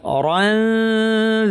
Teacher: অরানজা পড়ার সময় জিহ্বাকে পরের হরফ দালের মাখরাজে কাছাকাছি নিয়ে আসবো, নাক থেকে গুণনা করবো, এটার নাম ইখফা।